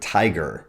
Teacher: This poem begins with the word tiger, which has the stress in the first syllable.